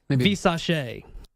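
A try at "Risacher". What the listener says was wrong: Did you put a V on that? I think it's Risachet.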